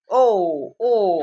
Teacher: कंठातून येतो आणि ओठांची हालचाल होती, त्याला म्हणायचं कंठोष्ठ. ओ पहा, ओ म्हणताना पहा ओठांची हालचाल होते, ठीक आहे, आणि कंठातून येतोय.